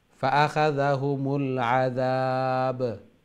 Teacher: When you stop in ba, there will be sukun and also qalqalah, echo sound, jacking sound.